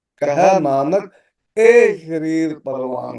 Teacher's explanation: ਹਾਏ ਦਾ ਔਂਕੜ ਨਹੀਂ ਬੋਲਣਾ, ਇਹਨੂੰ ਇਹੋ ਨਹੀਂ ਪੜਨਾ ਹੈ, ਗਲਤ ਉਚਾਰਨ ਹੈ।